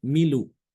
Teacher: Nakal itu memindahkan harokat ya, harokat hamzah kepada huruf sebelumnya.